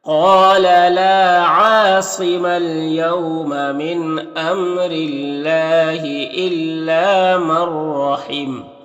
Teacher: وقف کریں گے تو میم کا زبر سکون سے بدل جائے گا